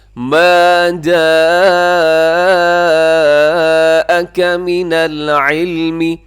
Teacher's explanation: آگے ما جاءک من العلم, یہاں جاءک میں بھی بڑی مد ہے متصل